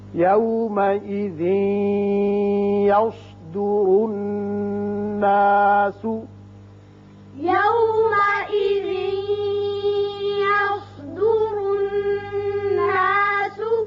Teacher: را کے اوپر پیش ہے یہ بھی پر ہوگا اور نون مشدد ہے یہاں غنہ کریں گے